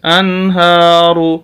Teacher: انہا کھڑی زبر ہے، ہا کو لمبا کریں گے.